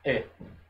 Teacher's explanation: Então, na hora de pronunciar isso aqui, você tem o Shevá, que significa que você vai falar mais rapidamente, e você tem o Segol, que representa a vogal E, um E mais aberto. A pronúncia disso daqui fica E.